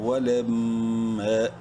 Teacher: واو زبر وا، لام میم زبر لم، میم مشدد ہے، غنہ ہوگا. اور ایک الف کے برابر میم کو لمبا بھی کریں گے الف مدہ کی وجہ سے. میم الف زبر ما، ولم.